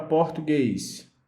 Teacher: A palavra português, a sua última sílaba, ela é a mais forte, então é a palavra oxítona. E como ela é terminada em E, seguido ou não de S, ela é acentuada.